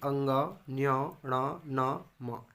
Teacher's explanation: इसका उच्चारण करने से नाक के मार्ग से वायु गमन करती है, वायु निकलती है, इसीलिए इसे अनुनासिक व्यंजन कहते हैं।